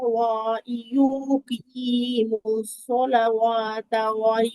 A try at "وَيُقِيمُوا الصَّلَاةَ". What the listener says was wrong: সালাওয়াত না আপু, ওয়া ইউকিমুস সালাতা। আপু ওয়া ইউকিমুস সালাওয়াত না, সালাতা, ওয়াওটা এখানে খালি আসছে, লাম খারা জবল্লা।